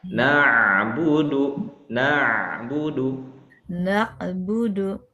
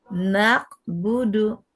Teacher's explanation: berasal dari tengah tenggorokan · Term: huruf ain